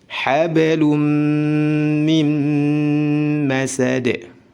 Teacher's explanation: Jika ada tanwin atau nun sukun bertemu dengan huruf mim, maka dihukumi idgham bi gunnah. Dimasukkan, ditahan 2 harakat disertai dengan gunnah.